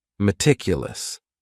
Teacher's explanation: That first syllable also has that schwa, that A sound, that reduced vowel sound.